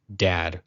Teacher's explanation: the DALET makes a dental /d/ sound, as in the word 'dad'